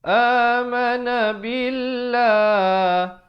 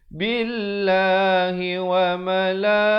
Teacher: Lafzu jalalah datang sebelumnya baris kasrah dibaca nipis.